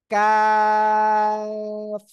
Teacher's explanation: করেন এই সবাই আমার দিকে জিহ্বার গোড়া এই যে তাই না জিহ্বার গোড়া থেকে একটু আগে বাড়িয়ে এই যে একটু আগে বাড়াবেন বাড়িয়ে উচ্চারণ করবেন